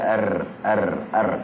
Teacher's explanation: lidah tu ada getaran dia dan berulang-ulang getaran dia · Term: takrir